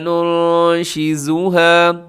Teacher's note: ننشزها نون ساکن کے بعد نون ہے، یہاں اخفا ہوگا